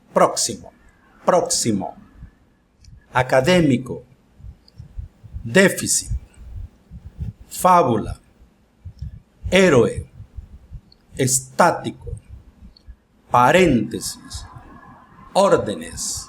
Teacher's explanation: a sílaba tónica está ante penúltima sílaba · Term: palabras esdrújulas